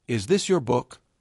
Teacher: For instance, I once heard a learner say, "Is this your book?" with no rising tone. It sounded like a statement, not a question at all.